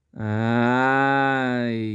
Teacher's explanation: E dentro do primeiro ápice, temos o som forte do A e o som muito fraco do I. Esse I aparece na finalização, na parte decrescente do som. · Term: semivogal